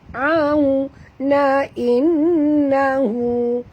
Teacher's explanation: wow sifatnya lin, muncungkan mulut